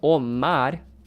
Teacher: the way I pronounce it I make it sound like the r has like a tap sound like just because I'm from the south